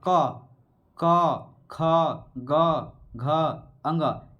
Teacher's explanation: तो दोस्तों देखिए, जैसे हम लोग बोलते हैं क, देखिए ये कंठ, ये हिल रहा है ना, कंठ क, ख, ग, घ, अंग, यानी इसका उच्चारण कैसे हो रहा है, कंठ द्वारा